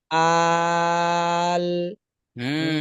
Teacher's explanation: আটাকে তিন থেকে পাঁচ আলিফ টান দিতে হবে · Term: খাড়া জবার